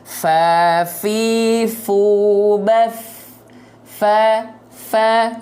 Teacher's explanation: yaitu adalah sifat hams hams ini artinya mengalir nafas ya maka ketika melafazkan Fa dan tepat pada makhrajnya maka dia akan mengalirkan nafas ya